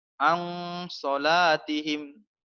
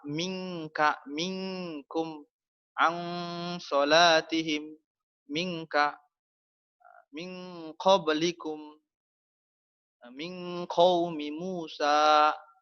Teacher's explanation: nun mati dan tanwinnya dibaca samar, baca sembunyi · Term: ikhfa hakiki